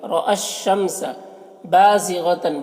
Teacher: تن کی تنوین میں اخفا ہو رہا، تنوین کی آواز کو ناک میں چھپا کر پڑھیں گے۔ · با میں الف مدہ ہے، ایک الف کے برابر کھینچیں گے۔ غین حروف مستعلیہ میں سے ہے، اسے پر پڑھیں گے۔